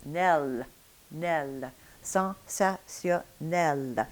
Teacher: Now for the last sound, l, there, that one is a little different. You're going to have your tongue tip in French clearly and firmly meeting the upper teeth.